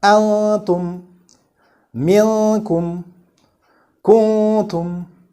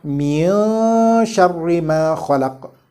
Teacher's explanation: the vowel before a hidden noon or noon of ikhfa should be read with full one vowel count. Just one vowel count.